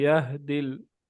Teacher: ये हा है सीने से अदा होने वाला हा